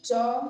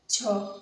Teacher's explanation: जैसे च छ छ में अधिक ऊर्जा लग रही है या छ में अधिक स्वास निकल रही है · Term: महाप्राण